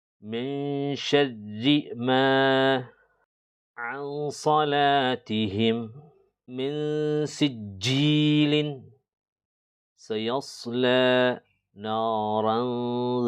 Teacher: If any of the 15 Arabic letters ta, tha, jeem, dal, zal, za, seen, sheen, sad, dad, ta, dha, fa, qaf, kaf come after a noon with a sukoon or tanween, they are pronounced with a slight nasal sound. The sound of the noon will be briefly hidden in the nose for 2 to 3 seconds. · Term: Ikhfa